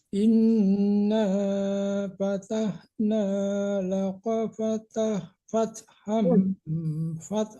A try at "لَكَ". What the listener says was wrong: lakonya koknya kecil, tipiskan, jangan lako tapi laka, tipis.